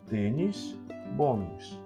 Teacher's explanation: a sílaba tônica de tênis é o tem e na palavra bônus é o bom bônus por isso a